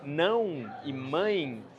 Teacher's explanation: E a gente pronuncia ditongos nasais. Não e mãe são palavras que praticamente só os falantes do português conseguem produzir.